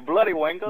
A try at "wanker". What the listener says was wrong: No, that sounds Indian, saying bloody wankers. You're the first bit right. No, say wanker with an ah at the end.